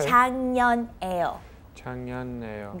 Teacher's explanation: We have the K 받침 and the N 받침. When they meet together, it's 장, like NG pronunciation.